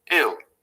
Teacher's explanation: they pronounce hill and ill identically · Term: h-droppers